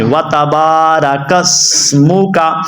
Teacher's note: آپ دیکھ رہے ہیں سین کو ادا کرنا ہے، سواد کو نہیں